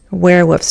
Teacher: werewolves, 2 syllables, stress on the first